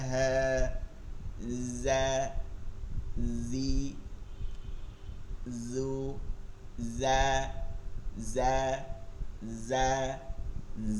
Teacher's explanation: ঝায়ের উচ্চারণ হচ্ছে জিহ্বার আগা এই দুই দাঁতের আগাতে গিয়ে লাগবে। হ্যাঁ, উপরের দাঁত না কিন্তু, উপরের দাঁত নরম, এখানে লাগলে জাল হয় জ্যা, আর এখানে লাগলে শব্দ আসে ঝড় বন্যার মতন জ্যা জ্যা।